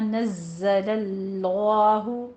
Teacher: ज़ाय में सीटी की आवाज़ और तशदीद भी सख्ती के साथ पढ़ना है